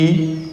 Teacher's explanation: ई मतलब केवल हमारी ध्वनि बाहर आ रही है लेकिन मु नहीं खुल रहा है